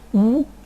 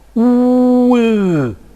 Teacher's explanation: cardinal 8 with rounded lips, U, and then I will unround my lips